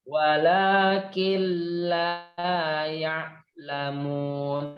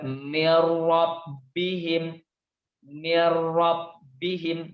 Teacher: Tetap ada penekanan karena dia bertasydid. Tetap ditekan tapi tidak didengungkan. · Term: idgham bila gunnah